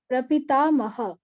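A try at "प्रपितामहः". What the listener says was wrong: Only one ha is heard. A little bit you have to force yourself to duplicate that visarga also in your mouth. Thoda sa. Prapita Mahah. At least Mahah or Mahaha, like that here as well.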